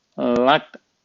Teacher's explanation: He nasalized the Akara part of the Lat. So Lat is broken down as La, and T.